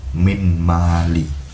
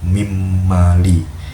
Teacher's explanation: Yang dimana min mali menjadi mim mali ini, nun ini melebur ke dalam huruf mim sehingga bunyi mim yang lebih kuat menjadi mim mali. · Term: idgham